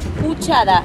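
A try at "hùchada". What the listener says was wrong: Uchada con H. H-U-C-H-A-D-A. Ustedes lo van a pronunciar uchada, pero en papiamento sí se pronuncia la H. Uchada con H.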